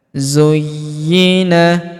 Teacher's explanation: Huruf Y kita tahan dan kita tekan karena terdapat tanda tasdid di atasnya. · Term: tasydid